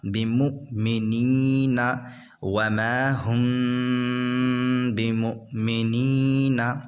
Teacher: یہاں پر جو ہے اخفاء شفوی ہوگا کیونکہ میم ساکن کے بعد حرف با آ رہا ہے اس وجہ سے. اور اخفاء شفوی جب ہوتا ہے تو اس میں گنہ کرتے ہیں، یعنی یہاں پر گنہ کر کے پڑھیں گے